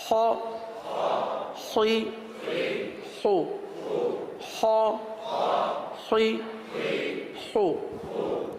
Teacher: خا کا مخرج کیا ہے؟ خا حلق کے اوپر والے حصے سے, جو منہ کے قریب ہے حلق کا وہ حصہ, یہاں سے خا ادا ہوتا ہے